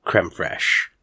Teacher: when I say crème fraîche, talking to an American friend, I don't do that French R so much. It's more crème fraîche.